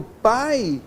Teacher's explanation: que é um ditongo decrescente oral. Por quê? A vogal A é oral.